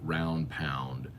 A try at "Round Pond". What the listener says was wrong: Round pond, not round pound. You said round pound.